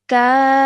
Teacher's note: Maddul Kabir is found over here, which means we have to stretch the sound out of ka for at least 4 seconds, then joining the fa sound at the end because of the shadda